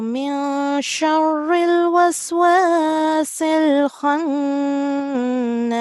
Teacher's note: you have to do a nasal sound in khannas, so you have to stay there for around 2 seconds